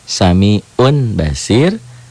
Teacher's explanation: tanwin Pak maka efek bunyinya yang asalnya Samiun jadi suami Om bunyi nun mati berubah menjadi mim mati n-nya menjadi m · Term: iqlab